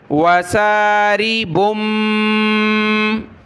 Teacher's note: तनवीन के बाद बा है, तो छोटी मीम आ गई, बा को छोटी मीम के साथ मिलाया